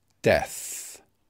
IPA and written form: deθ (death)